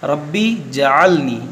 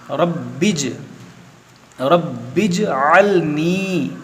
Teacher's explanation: यहाँ पर देखें बा के नीचे ज़ेर है, तो इस बा को जीम से मिलाएंगे, रब्बिज रब्बिजअलनी, इस तरह पढ़ना है।